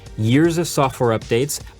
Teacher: dropped the T sound in software